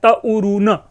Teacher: तरुण में रू में उ पहले से विद्यमान है, उ स्वर है और उसी उ का आगम पुनः मध्य में हो रहा है रू से पहले। यह भी ध्यान में हमें रखना है कि जिस स्वर का आगम होता है वह स्वर बाद में आगम नहीं होगा, बल्कि जो स्वर है, जो जिस स्वर का आगम होगा वह स्वर पहले से विद्यमान समान स्वर के पूर्व में उसका आगम होगा।